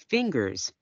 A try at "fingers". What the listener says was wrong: Fingers. Nhớ âm S ở cuối cọc. Fingers.